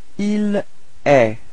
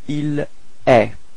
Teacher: So it's quite strange because it does sound the same as tu, okay, but then there is this final T, but you don't pronounce it.